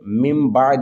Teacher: اقلاب، نون ساکن یا تنوین کے بعد حرف با آ جائے تو اقلاب ہوگا، یعنی نون ساکن اور تنوین کو میم سے بدل کر اخفا کریں، یعنی غنہ کر کے پڑھیں